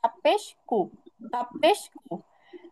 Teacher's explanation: জিহ্বার গোড়ার থেকে সামান্য একটু আগে বাড়িয়ে বরাবর উপরের তালুর সঙ্গে লাগায়